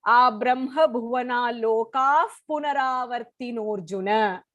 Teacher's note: It has to be the entire first line in one stretch with the Visarga pronunciation, which will be a f in the 16th shloka.